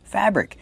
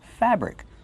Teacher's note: Put the stress on the first syllable.